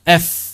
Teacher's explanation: F itu berudara, tapi tidak bergetar tenggorokannya.